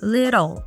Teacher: little is pronounced with a flap T